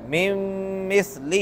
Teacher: نون ساکن کے بعد میم آ رہی ہے تو اس میں غنہ ہو رہا ہے